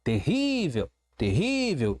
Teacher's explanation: Percebi que a penúltima sílaba, o ri, ele é mais forte, ele é o tom, ele dá o tom desta palavra. Terrível, terrível, ele dá a cadência. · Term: sílaba forte